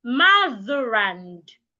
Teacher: Then you link mother to and motherand.